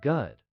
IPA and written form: ɡʊd (good)